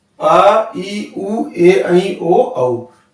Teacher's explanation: जिन स्वरों के उच्चारण करते समय ह्रस्व स्वर से दुगना समय लगे वो कहलाते हैं हमारे दीर्घ स्वर।